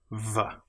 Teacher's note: Now the VV as we've already mentioned is with your top teeth on your bottom lip v. And you feel the VV vibration.